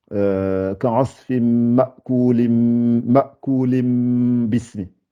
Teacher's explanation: Donc je remplace l'une des n là, le n que j'ai Ma'kulin, ma'kulim. Je ne dis pas le N, je le remplace par un M. Donc, ka'asfim ma'kulim bismi. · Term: iqlab